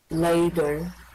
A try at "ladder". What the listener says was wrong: Ladder. Yeah.